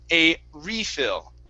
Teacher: So the noun has the stress at the beginning.